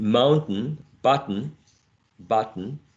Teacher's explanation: You can use also a glottal stop, as in mountain, button